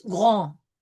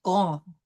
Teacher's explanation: Comes from the back of the throat through the nasal R and then out through the nose. · the D at the end of grand is not pronounced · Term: nasal vowel, generally silent